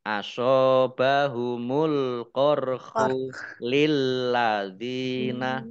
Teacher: lamnya dibaca dobel ada tasdidnya